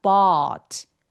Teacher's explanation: 그래서 턱이 엄청 길어지고 소리가 굴곡지게 나야 돼요. 길어야 돼요.